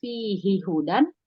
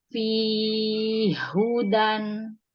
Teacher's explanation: Mad lazim musaqol kalimi dibacanya lazim itu 6, dibaca 6 harokat. Jadi kalau di Imam Hafs dibaca 2 harokat fihi hudan, karena ini jadi mad tabi'i. Kalau di Abu Amr jadi mad lazim.